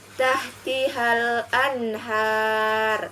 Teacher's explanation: maka cara membacanya adalah jelas atau terang contohnya tahtihal Anhar Hai yaitu nun mati bertemu dengan huruf H maka dibaca jelas atau terang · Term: hukum izhar